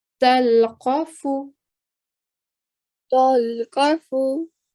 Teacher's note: because the fa is carrying a dhamma, we're going to give it a 1 second timing, okay? So we're going to say talqafu.